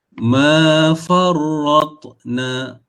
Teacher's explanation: sebab ta ni mati, dia menjadi qalqalah